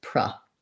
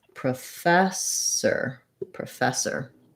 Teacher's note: you'll see in the ipa that there's a schwa and then you'll see this mark showing that the syllable stresses on the fess that that e says the e as in red tent double